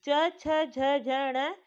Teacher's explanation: इन सबका स्थान क्या है तालू का ये तालू से निकलते हैं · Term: च वर्ग